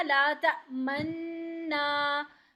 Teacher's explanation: जब हम नून पे गुन्ना कर रहे होंगे ना, उसी टाइम पे हम पेश का इशारा कर देंगे।